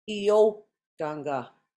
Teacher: I said the O slightly higher than the rest of the word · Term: accent